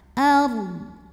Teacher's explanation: Huruf ra sukun dibaca secara tafkhim sebab huruf sebelumnya berbaris fathah, maka dibacanya tebal. Ard. Dan dodnya harus tetap terbaca.